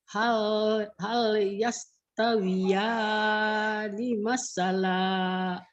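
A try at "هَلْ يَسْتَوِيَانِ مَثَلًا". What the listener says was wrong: Aninya aja agak masih ketahan. Jangan masalah.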